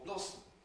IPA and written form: ˈblɒsm̩ (blossom)